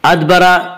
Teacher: अदबरा दाल पर कलकला होगा। दाल हुरूफ़ कलकला में से है।